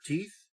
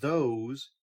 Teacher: the th sounds like the th in the word teeth which is the breathed version and the th sound like in the word those is the voiced version so they are represented by this curve on the left side